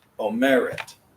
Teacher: Instead of omeret, o merit. Our emphasis is on the middle syllable there.